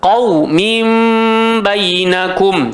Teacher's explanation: Iqlab pun kena tukar nun menjadi mim. Pasal dia letak mim kat situ. Sebab tu kita kena rapat bibir tapi tak tekan.